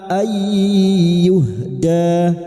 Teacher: nun sukun bertemu ya idgam bighuna masuk pada huruf ya dan mendengu selama tiga harakat.